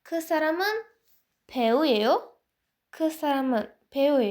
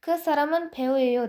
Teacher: soʻzning oxirini balandroq intonatsiya bilan aytish kerak bo'ladi